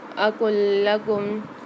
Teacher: قال علم قاف کے ساتھ الف مد آ رہا ہے، قاف کو موٹا پڑھنا ہے۔ اقل لکم لام کے ساتھ لام مشدد آ رہی ہے تو یہاں پر ہم دونوں کو ملا کر پڑھیں گے